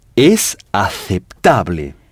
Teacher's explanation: on accentue l'avant-dernière syllabe. C'est-à-dire que c'est sur cette syllabe qu'on insiste.